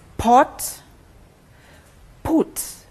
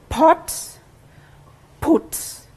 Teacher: the initial sound of each of the words when articulated the lips come together